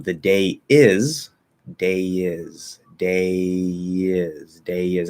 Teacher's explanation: it will link with a small y not a full y a small lie